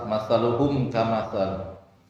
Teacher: Mim bertemu dengan kaf, dibaca jelas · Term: idhar syafawi